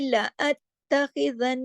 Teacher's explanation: پھر دیکھیے لا اتخذن، لا ات کو سختی سے جوڑنا ہے کیونکہ دیکھیے اس پہ تشدید ہے. ات تا کو 2 دفعہ پڑھا جائے گا, سختی سے جوڑا جائے گا, ڈھیلا ڈھالا نہیں پڑھا جائے گا